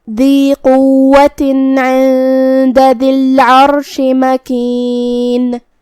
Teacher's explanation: کلمت ذی میں یہاں حرف الدال ہے. دال کی ادائیگی زبان کے سر اور اوپر والے دانتوں کے اندرونی کناروں سے ہے